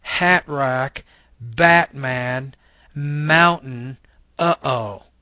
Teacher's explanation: Again, this is the glottal stop voiceless consonant. · we actually don't pronounce the T in the United States.